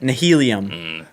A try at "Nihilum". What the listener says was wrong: You guys are putting way too many syllables on. Nihilum. You said nihilium.